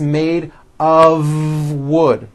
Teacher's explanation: made of wood it's not a wood with an unvoiced F it's all voiced and it's all connected